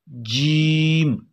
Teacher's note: ज़बान का दरमियानी हिस्सा और तालू का दरमियानी हिस्सा, यहाँ से जीम अदा होगी